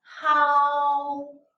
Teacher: the first tone, high and flat.